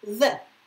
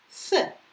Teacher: So, it is voiced, the. It is voiceless, th. But the principle is the same.